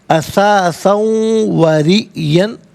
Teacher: ریئن میں آپ دیکھیں را کے نیچے زیر ہے، را کو باریک کر کے پڑھا جائے گا.